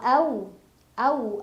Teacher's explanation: ada harf Lin karena ada wau sukun sebelumnya fathah dibacanya dilunakan